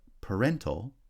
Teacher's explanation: parental has stress on the second syllable